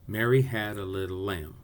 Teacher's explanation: we say every other syllable with more stress more energy it's called an accent da de da de that first syllable